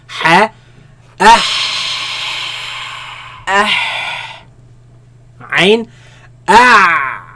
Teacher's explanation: They come from the middle of the throat, where the epiglottis moves back towards the back of the throat, right? And constricts the passing of the sound and the air, right?